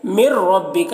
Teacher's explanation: نون کو را کے ساتھ ملا کر بغیر غنہ کے پڑھیں گے، اس کو ادغام تام کہتے ہیں، اور را کو پر پڑھیں گے، را مشددہ کے اوپر زبر ہے۔